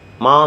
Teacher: With a falling rising tone, ma means horse. And with a falling tone, ma means to scold.